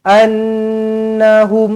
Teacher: annahum Nun sabdu wajibul gunna dengungkan lagi dua harakat